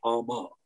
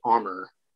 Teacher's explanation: it is the rhotic R sound, so the R at the end of the word